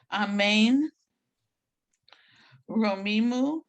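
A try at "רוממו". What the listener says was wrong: Remember, it's not E, but Romimu.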